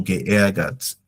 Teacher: The R stretches the vowel. R be after vowel stretches the vowel.